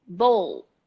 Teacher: the O is closed, like bowl, but the L is very present